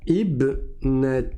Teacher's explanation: le alif ne va pas se prononcer dans la liaison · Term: hamza de liaison